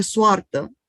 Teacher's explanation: la O breve tónica latina aparece en rumano como UA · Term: diptongo UA